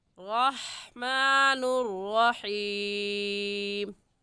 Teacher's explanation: रा के ऊपर ज़बर है, रा को मोटा करके पढ़ेंगे। रहमानुर रहीम में हलक के दरमियानी हिस्से से निकाल कर पढ़ेंगे।